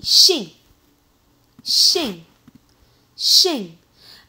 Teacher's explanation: We don't pronounce G. It's really just give a heavier nasal sound. That's it. You don't pronounce the G.